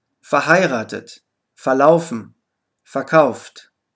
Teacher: die Vorsilbe ver wird häufig einfach FA ausgesprochen